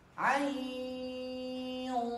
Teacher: dan ikhfanya di sini tebal karena bertemu dengan huruf sod. Hurufnya tebal.